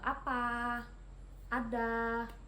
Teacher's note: vokal A rendah bawah depan dengan posisi mulut terbuka